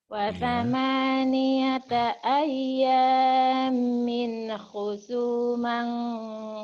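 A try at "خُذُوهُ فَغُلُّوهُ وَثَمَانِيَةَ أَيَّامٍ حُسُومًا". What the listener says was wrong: bersih, bukan kho. Hu. Husu bukan kho ya.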